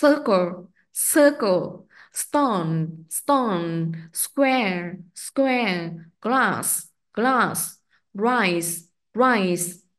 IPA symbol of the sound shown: s